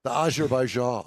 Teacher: you could just say it with just a little bit of a lisp, very sibilant S.